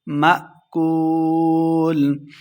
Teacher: حمزہ ساکنہ ہے، جھٹکے کے ساتھ پڑھیں گے